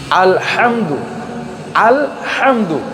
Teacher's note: হাই হত্তিটা হচ্ছে কণ্ঠনালীর মাঝখান থেকে